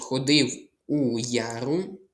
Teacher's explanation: Бо тут якраз приголосний й. Я голосна літера, але звук я, він складається з й та а, з двох звуків. Одна лі буква складається з двох звуків.